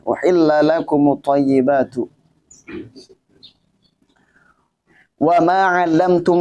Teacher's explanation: Wa ma 'allamtum, itu mim mati bertemu dengan mim jadinya idgham mim ya. Idgham mim yang pertama itu mati sukun. Mim yang kedua itu fathah. Maka di situ di idgham mimi itu gunnah ya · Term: gunnah akmal